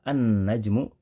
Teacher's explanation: Lam pada kata an-najmu dibaca dengan cara dimasukkan, digabungkan, melebur ke huruf nun. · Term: alif lam syamsiyah